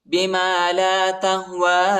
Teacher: یا نہیں پڑھا جاتا، یا کے اوپر حرکت نہیں ہے · کھڑا زبر اور چھوٹا مد ہے، اس کو تقریباً 2-3 سیکنڈ تک کھینچیں گے